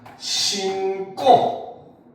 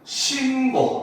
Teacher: 된소리 대기니까 신고 이렇게 발음이 되는 경우가 있고, 신고 이렇게 된소리 대기가 일어나지 않는 경우가 있어요